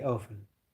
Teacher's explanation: The UK uh population pronounce often, but Americans don't pronounce the T. They say often.